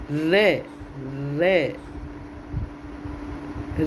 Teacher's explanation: जिह्वा बेलन की तरह लपेट खाकर वत्स को स्पर्श करती है और इस तरह से उत्पन्न ध्वनियाँ लुंठित कही जाती है। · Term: लुंठित व्यंजन